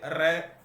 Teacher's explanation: तो लुंठित इसलिए क्योंकि इसकी ध्वनि जो है वह लुढ़कती हुई निकलती है। जैसे रे, जीभ के ऊपर से लुढ़कती हुई इसकी ध्वनि निकलती है, इसलिए लुंठित है। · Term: प्रकंपित व्यंजन